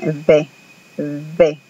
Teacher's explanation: un una era labio dental y la b grande era labial labio dental quiere decir que peguen los dientes de arriba Al labio de abajo